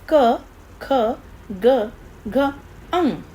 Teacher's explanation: इनका उच्चारण कंठ से होता है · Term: कंठ्य व्यंजन